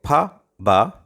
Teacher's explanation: in the animation we see that for pa ba the two lips touch each other tightly the air is compressed and the leaves separate suddenly as a result here passes out